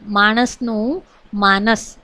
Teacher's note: દંત્ય અને મૂર્ધન્ય વ્યંજન નો જે છે એની અદલાબદલી જોવા મળે છે સુરતીમાં